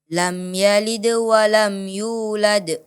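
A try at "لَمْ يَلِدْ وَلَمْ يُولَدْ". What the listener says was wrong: Ya, qalqalahnya dipantulkan dan dijelaskan lagi. Lam yalid wa lam yulad.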